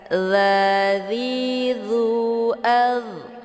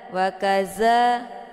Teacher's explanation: dza letak posisinya di ujung lidah, ditekan ke gigi seri bagian atas.